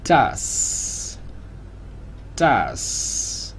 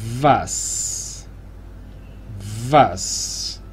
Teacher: Cuando tenemos una S simple al final de sílaba se hace sorda, o sea, normal, por llamarlo de alguna manera. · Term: S sorda